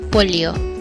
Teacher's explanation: Y is one sound articulated with the apex down and the middle of the tongue pressed against the palate.